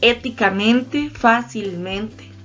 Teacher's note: Y tenemos la sobresdrújula que dice que la sílaba tónica está antes de la antepenúltima